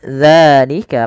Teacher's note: dzalika panjangkan danya dua harakat karena ia mad thabi'i